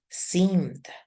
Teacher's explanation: we make the sound of the past tense with the voice sound which is the D